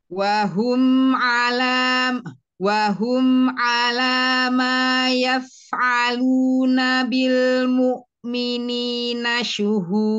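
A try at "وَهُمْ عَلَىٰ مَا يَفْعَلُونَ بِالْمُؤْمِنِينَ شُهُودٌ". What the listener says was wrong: Ya, yang terakhir, tapi jangan ada e-nya. Syuhud, tipis.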